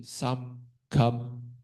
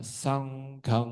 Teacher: Kalau versi Myanmar itu biasa mereka lebih suka mulutnya itu benar-benar ditutup penuh gitu, bibirnya ditutup penuh. Jadi suara itu benar-benar bergetarnya dari hidung dan kadang ada udara juga keluar dari hidung. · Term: suara hidung